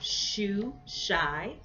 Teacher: taking the tongue back to the palate all right so the sound is a palatal sound